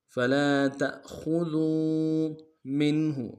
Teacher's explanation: تا کو حمزہ کے سامنے لائیں گے، جھٹکا دیں گے